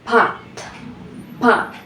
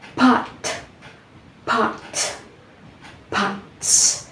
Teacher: we will notice the explosion of air right after we completely block the airflow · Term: stops